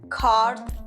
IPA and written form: kɑːrd (कार्ड)